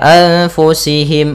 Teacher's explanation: Kemudian anfusihim ada nun mati bertemu fa, hukum tajwidnya ikhfa, caranya adalah kita samarkan nun ke fa